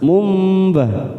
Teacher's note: Kita tekan 3 ketuk. Ada nun sukun bertemu ba, namanya bacaan iklab. Ini juga kita tekan 3 ketuk